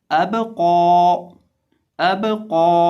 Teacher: क़ौफ को मोटा करेंगे और बा को कलकला।